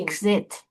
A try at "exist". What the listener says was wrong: No, exist. No, zist. There's an S. No, you're saying exit. Exist.